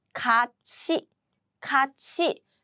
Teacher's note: When 티읕 meets 이 sound, these two combined and they become 치.